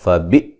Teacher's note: حمزہ کو جھٹکے سے ادا کریں گے